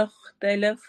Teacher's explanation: خا موٹے حروف میں سے بھی اور حروف حلقی میں سے بھی ہے